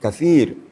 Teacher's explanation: Kalau sa itu ee nyaris tidak ada desisnya, hanya sekedar angin hembusan tapi tidak berdesir.